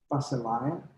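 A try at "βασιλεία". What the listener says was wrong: Okay, but according to the book, the A needs to be long through the whole word. Basileia.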